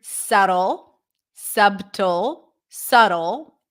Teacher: we do not pronounce the b